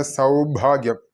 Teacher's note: ഭ ശ്രദ്ധിക്കണം ഘോഷ ശബ്ദമാണ് മഹാപ്രാണൻ